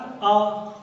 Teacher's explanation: वहीं बात करते हैं अर्धवर्तुल, आधा आ बोलते हैं तो हमारा ओंठ जो है आधे खुलते हैं, गोल आधे गोल होते हैं, आधा गोल हुआ।